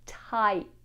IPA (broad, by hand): taɪt